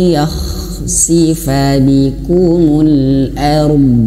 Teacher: Huruf kha ini dia tidak boleh ngorok